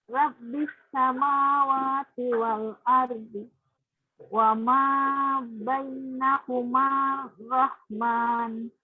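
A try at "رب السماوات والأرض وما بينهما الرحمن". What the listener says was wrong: Nah, di situ ada tasjid, Bu. Wa ma bainahumar rahman. Hati-hati, rob itu di ba-nya ada tasjid.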